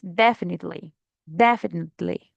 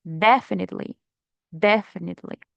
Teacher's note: we have the intonation or the stress in the first syllable